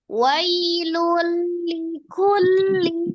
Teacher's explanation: Tanwin bertemu dengan huruf lam, hukumnya adalah idgham diidghamkan yang kedua tapi dengan tidak gunnah, idgham bila gunnah.